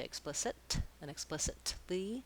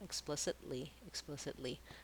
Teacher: I make a stopped T, explicit, where I just move up to mark that T, and then I move right into my L